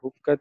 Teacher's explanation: کاف مشدد ہے، زور دے کے پڑا جائے گا اور تا پہ ہمس ہوگا، یہاں وقت ہوگا۔